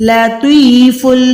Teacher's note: تو کو موٹا کریں، منہ کو گولائی کریں